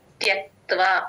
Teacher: త్యక్త అనేస్తారు వత్ వ వదిలేస్తారు ఇక్కడ త్యక్ త్వ క్లియర్ గా వినిపించాలి త్యక్త్వ క కింద త ఒత్తు వ ఒత్తు రెండు ఒత్తులు కూడా వినిపించేటట్టు చెప్పాలి